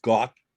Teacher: got with a very hard T where the tongue has to go up to the roof of the mouth and then it has to be released.